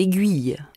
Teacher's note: on prononce le « u » dans « aiguille » mais pas dans « aiguiser »